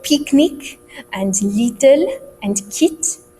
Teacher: the I sound, like kit or picnic or little, become E sounds